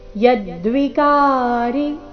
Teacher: ಯದ್ವಿಕಾರಿ ಈ ಶಬ್ದದಲ್ಲಿ ಕ ಮಾತ್ರ ದೀರ್ಘ ಯ ಮೇಲೆ ಆಘಾತ.